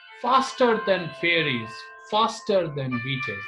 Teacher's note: the rhythm of this poem echoes the rhythm of a train, with the poem following a stressed followed by unstressed pattern